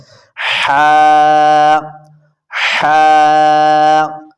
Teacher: یہ ہا حروف حلقیہ ہے، یہ آپ نے حلق کے درمیان والے حصے سے نکالنی ہے۔